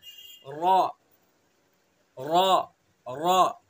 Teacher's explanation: जबान का किनारा और कुछ जबान की पुश्त जबकि मिले सना उलिया रुबाई के मसूड़ों से।